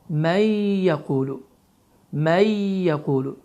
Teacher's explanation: idğam qaydası zamanı burada iki hərəkə miqdarında həmin qayda uzadılır. Yəni bu formada, yəni iki hərəkətə dediyimiz zaman barmaqlarımızı iki saniyə miqdarında tərpət etmək nəzərdə tutulur. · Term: idğam məğununə